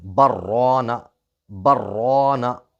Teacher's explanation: دونوں جگہ با اور میم کو را کے ساتھ ملا کر پڑھنا بھی درست ہے، اس صورت میں سکتہ نہیں ہوگا، مطلب سکتہ کو چھوڑ دیں گے تب بھی کوئی حرج نہیں ہے۔